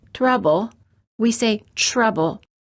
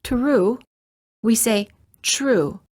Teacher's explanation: when the t is followed by an R sound the T changes and becomes an almost CH sound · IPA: /tʃ/